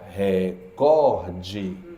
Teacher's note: E recorde é paroxítona. Mais forte é o có.